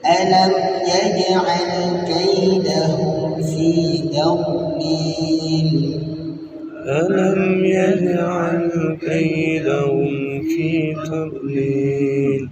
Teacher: Yang pertama, kaidahum, ka harus berdesis. Kemudian yang kedua, lil, panjang lil sama dengan panjang fil.